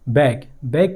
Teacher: बैक, बैक के आखिर में के आए है और के एक वॉइसलेस कॉन्सोनेंट है, क्योंकि यहाँ पर हमने किसी वाइब्रेशन को महसूस नहीं किया